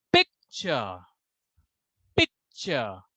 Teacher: You have to speak that word in a high pitch. So there are two syllable picture. So let's see where we need to put more emphasis. And the right syllable is pick.